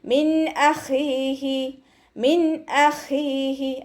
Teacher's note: നൂൻ സാക്കിനയ്ക്ക് ശേഷം വീണ്ടും ഇദ്ഹാറിൻ്റെ ലെറ്ററായിട്ടുള്ള ഹംസ വന്നിട്ടുണ്ട്. നൂൻ സാക്കിനയെ വ്യക്തമാക്കി മണിക്കാതെ ഓതുക. മിൻ അഖീഹി, മിൻ അഖീഹി അതുപോലെ നൂനിൻ്റെ സൗണ്ടിനെ വ്യക്തമായിട്ട് കേൾപ്പിക്കുക കേട്ടോ.